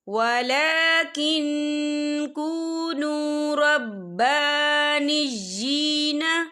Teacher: با کے پر کھڑی حرکات ہے، تو ہم اسے 2 یا 3 حرکت کے برابر کھینچے پڑھیں گے، اور نجی یا کے نیچے کھڑی زیر ہے تو ہم ادھر بھی 2 یا 3 حرکت کے برابر کھینچے پڑھیں گے۔